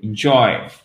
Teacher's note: Le I court, en fait, vous le prononcez presque comme un E accent aigu.